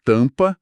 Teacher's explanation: O M apenas nasaliza o A.